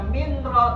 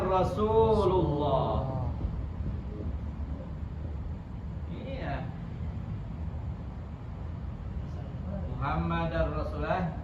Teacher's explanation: Nun mati pada huruf berarti lam atau ro dengan tidak pakai dengung